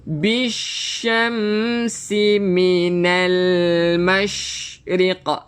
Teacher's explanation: Jaga shin. Sifat tafashi, ada semburan sikit.